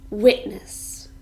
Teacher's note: this is a noun and it has two syllables and we stress the first one